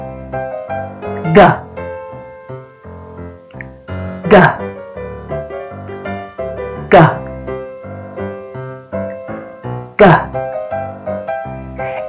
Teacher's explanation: This is a voiced sound, so your vocal cords will vibrate when making this sound.